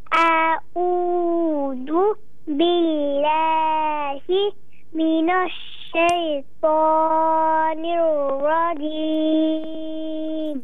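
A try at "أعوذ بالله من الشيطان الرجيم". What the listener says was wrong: ये आउज़ इसको जो है ना खींचे मत, बाकी आपने बहुत अच्छा पढ़ा, दोबारा पढ़िए सूरह आउज़ बिल्लाह को, तआवुज़ को।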